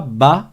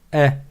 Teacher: c'est pas comme un A français c'est un e ça ressemble au e accent grave un peu un mélange entre le a et le E accent grave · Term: la fatha